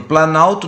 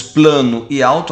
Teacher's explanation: nós temos a perda do fonema o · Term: aglutinação